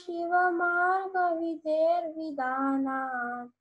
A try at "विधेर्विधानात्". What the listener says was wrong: So it's vidher vidhanat. Like you have to like stretch it. Vidhanat.